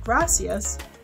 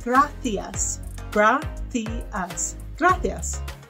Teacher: Speaking Spanish in Spain, you would say your C's with a th sound. So instead of gracias, you would say gracias, gracias, gracias.